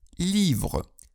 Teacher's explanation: Французский гласный «и», как в слове «livre» – «книга», соответствует русскому «и», однако произносится более напряженно.